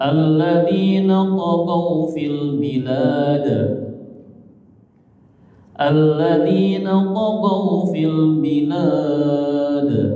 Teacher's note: Jadi kata bilad bisa panjang 2 boleh, 4 boleh, 6 boleh ya. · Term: mat arid lisukun